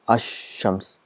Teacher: So what happens is, the al is written, it becomes silent, and the sound of sheen is doubled. So it's ash-shams, so 2 times. · when al comes with shams, the sound of lam becomes silent. It becomes ash-shams. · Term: silent lam